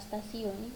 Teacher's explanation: Asimilasi progresif yaitu bunyi T pada bunyi apikoalveolar atau apikodental, tetapi pada kata stasiun bunyi T dilafalkan sebagai bunyi T laminoalveolar. Perubahan bunyi hambat apikoalveolar T menjadi bunyi hambat laminoalveolar adalah karena pengaruh secara progresif dari bunyi geseran laminopalatal S.